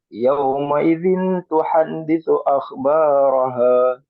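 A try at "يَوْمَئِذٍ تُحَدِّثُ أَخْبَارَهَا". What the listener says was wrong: Nah, perhatikan agak di temponya sedikit diperlambat lagi, Pak. Supaya tidak nabrak pas baca tadi ikhfanya.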